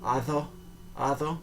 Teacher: the D is elided to sound like a TH sound